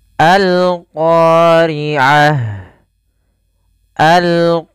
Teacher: alif lam yang kita Tuliskan dan kita baca suara lamnya dengan jelas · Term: alif lam qamariyah